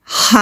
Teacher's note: हा हरफे हल्की है हलक के दरमियान से अदा होता है